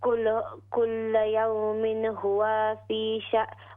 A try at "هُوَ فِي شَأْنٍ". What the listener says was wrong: हुआ के वाव के ज़बर को लंबा न करे हुआ कुल यौमिन हुआ फी शअन कुल यौमिन हुआ फी शअन हमज़ा भी साकिन और नून भी साकिन।